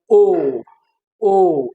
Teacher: it is being produced at the back of your mouth